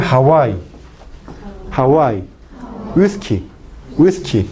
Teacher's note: Entonces son es la consonante fricativa, sin embargo, cuando pronuncia Hawái, Hawái, whisky, whisky, el postdorso de la lengua se acerca, pero nunca toca el velo de paladar, causando la fricción del aire. Y el aire sale por ambos labios. Entonces, la oclusión, la fricción ocurre en la zona, tanto en la zona velar como en la zona labial. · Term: consonante fricativa bilabiovelar